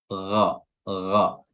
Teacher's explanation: huruf ghain makhrajnya adalah adanal halq atau tenggorokan bagian atas. Gha ya, dan dia merupakan huruf tebal ya, huruf isti'la.